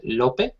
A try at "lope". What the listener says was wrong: yes, lope, actually. You don't pronounce the second syllable. It's just lope. So in English, when you have a E on the end of a word, what it does is it makes the letter, the vowel before it, say its name, okay?